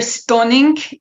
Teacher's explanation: So her vowel was o, and that's definitely an influence from Yiddish. And the ink at the end, it's called final devoicing, where you have an ing, and then the g is actually pronounced, but then it's devoiced.